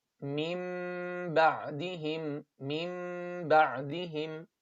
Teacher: no gap between the lips in ikhfa shafawi and qalb. And no pressing, just normal closure.